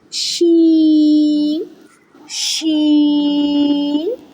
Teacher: The center of the tongue touches the upper hard palate.